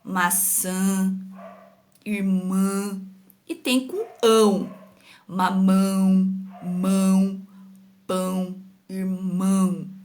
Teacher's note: faz até o barulhinho saindo de dentro do nariz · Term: som nasal